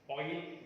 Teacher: This is a glide from back open rounded vowel just below half open position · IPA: /ɔɪ/